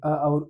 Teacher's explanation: कंठ और ताल को जब हम मिला रहे हैं तो कंठ ताल मिलाने के बाद यानी अ और इ मिलाएंगे तो ए मिलेगा। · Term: संयुक्त रूप